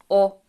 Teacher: the sound o is pronounced almost like the english one the difference is that the lips are a bit less circled